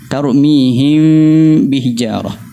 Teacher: Sepatutnya gunnah tu datangnya daripada gunnah pangkal hidung ni, rongga hidung, bukannya daripada huruf ghain yang digunnahkan.